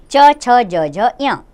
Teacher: ये तालू इनका उच्चारण स्थान है नाम है तालव्य